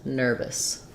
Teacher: nervous the second syllable is going to have a reduced vowel we'll either say that as an i sound or an a